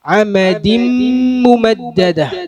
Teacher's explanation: ഇദ്ഗാം ഈ തൻവീനെ ശേഷമുള്ള മീമിലേക്ക് ലയിപ്പിച്ച് പാരായണം ചെയ്യണം.